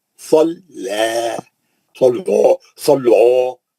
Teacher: خالی صاد موٹا ہے، لام موٹا نہیں ہے